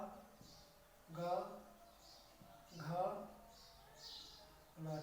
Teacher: कंठ मतलब गला, गले से इनका उच्चारण होता है इसलिए हम कंठस्थ व्यंजन इनको बोला जाता है। ये का वर्ग को कंठ व्यंजन बोला जाता है, कंठस्थ व्यंजन बोला जाता है।